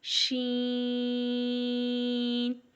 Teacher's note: same شین کے اوپر بھی مد ہے تو شین کو بھی ہم 5 الف کے برابر لمبا کریں گے